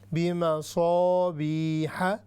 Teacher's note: یہ صاد ہیوی ہے چونکہ مستعلیہ ہے